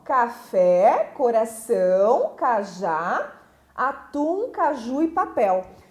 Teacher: são as palavras que a sílaba tônica, a sílaba forte, é a última sílaba da palavra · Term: oxítonas